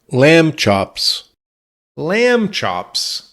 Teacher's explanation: We don't say the B.